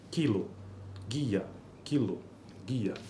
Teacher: seguidas de da vogal I por exemplo em kilo e guia a propriedade de ser anterior da vogal i é compartilhada pela consoante precedente k e g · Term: palatalização de consoantes velares